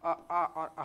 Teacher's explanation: इन सभी का उच्चारण कंठ से हो रहा है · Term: कंठव्य